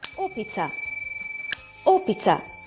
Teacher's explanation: v besedi opica je glas O bolj poudarjen kot druga dva samoglasnika. Opica, opica. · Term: naglas